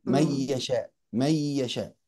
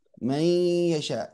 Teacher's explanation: فيها جزء من الشفتين وفيها جزء من الخيشوم. الغنة نعم مدتها حركتين، لكن التطويل فيها مخالف لجودة القراءة. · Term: الإدغام بغنة